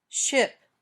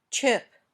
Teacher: say ch when you say shh there should be no movement when you say sh you can continue to make the sound for a long time when you say ch you can't the sound ends suddenly